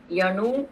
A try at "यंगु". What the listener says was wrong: यंगु, यणु नहीं, यंगु ना, हाँ ठीक है, यंगु वंगौ कंठस्थान जी, सम्यक।